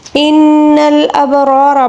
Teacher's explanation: ان الابرار، با کے اوپر ساکن ہے، اس کو قلقلے کے ساتھ پڑھیں گے۔ را دونوں را کو ہم پر پڑھیں گے کیونکہ اس کے اوپر زبر ہے